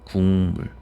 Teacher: 비음이 아닌 게 비음으로 바뀌었다